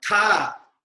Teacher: Tha is same like ta, but additionally there is a ha sound coming from the throat.